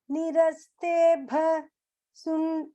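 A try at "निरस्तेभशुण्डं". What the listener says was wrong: sha like shiva shunda இல்ல sa இல்ல sha yeah like shiva சொல்லுவாங்க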